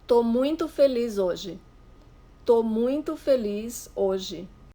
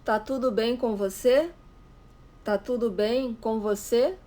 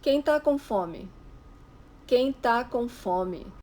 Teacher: In spoken Brazilian Portuguese and in informal written Portuguese, we rarely pronounce the full word for the verb estar. We usually drop the first syllable, the es part of the verb.